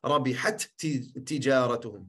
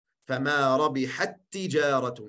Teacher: Je spreekt het uit als één te met een shadda. En daarom staat ook een shadda op de tweede te. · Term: idgham sagheer